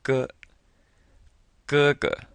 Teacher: up with a G it's very short though G G and you'll notice that the first G is a first tone and then the second one is the neutral